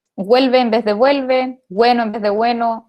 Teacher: Ya todos sabemos que en Chile no hacemos diferencia entre la v corta, que le decimos la v y la b, o hacemos algo entre medio, que sería este fonema que tenemos aquí, pero además de eso, tenemos una alternación con la W, sobre todo cuando tenemos una U después